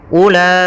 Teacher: pada lafal u itu tidak boleh dibaca ula, tapi langsung saja ke la-nya karena wawunya dianggap tidak ada